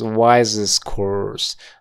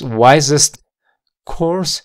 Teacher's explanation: a desaparecer cuando conectemos Wi course no es wisest course y vamos a eliminar ese sonido de la t porque está entre dos consonantes